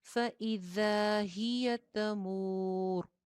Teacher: फ छोटा सा, हमजा के नीचे जेर, ذال سیٹی کے بغیر اور الف مدہ کے ساتھ